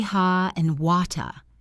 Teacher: In standard British English, the R is often silent at the end of words.